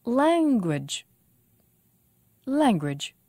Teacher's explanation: language two syllables and the stress is on lang